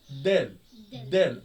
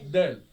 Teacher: دال طرف اللسان مع سقف الحنك العليا